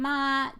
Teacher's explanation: the first one the flat tone ma that's mother